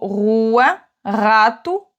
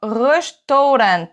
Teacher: Quand le R est en début de mot, il va se prononcer comme le R en français, sauf que tu vas le rouler légèrement. Vraiment, tout se passe au fond de la gorge, on appelle ça un son guttural.